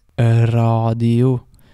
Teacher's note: You might notice that there's this very slight E sound in front of the R. So it doesn't just start an R, like in English it would be radio. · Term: Norwegian R